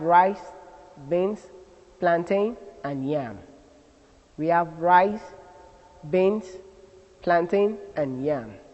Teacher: all items in the sequence take a rising tune except the last which takes a falling tune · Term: rising falling tune